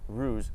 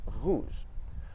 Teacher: in English we pronounce the r at the front of our mouth around here but in French we pronounce it at the back of our mouth close to the uula so when we push our tongue back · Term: French R sound